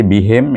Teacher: Tadi bihim, ingat him adalah huruf pangkal halqum, bunyinya lebih berat sikit. Him pasal dia jauh ke bawah, pangkal halqum.